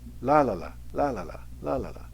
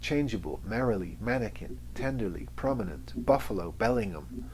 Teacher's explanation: so we have a dactyl or dactylic rhythm which is strong weak weak